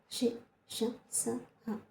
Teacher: నోటి సహాయంతో ఊది పలుకుతాము కాబట్టే వాటిని ఊష్మాక్షరాలు అన్నాము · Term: ఊష్మాలు